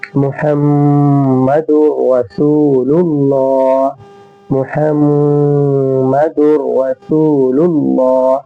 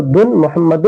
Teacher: تنوین کو ہم را سے ملا دیں گے اور تنوین کی آواز نہیں آئے گی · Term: ادغام